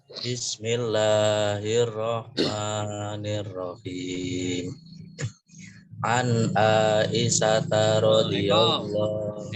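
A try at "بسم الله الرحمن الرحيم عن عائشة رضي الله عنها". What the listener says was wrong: kalau membaca hadis nggak boleh seperti baca Al-Qur'an ya. Jadi baca hadis biasa saja. Iya, baca hadisnya biasa saja ya.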